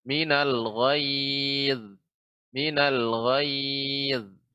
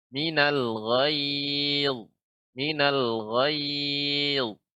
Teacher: Ghayz dengan lidah dinaikkan ke atas ya sehingga suara terkumpul di langit-langit. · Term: huruf isti'la yang tebal